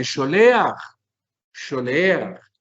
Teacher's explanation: El acento siempre lo hacemos en la última sílaba.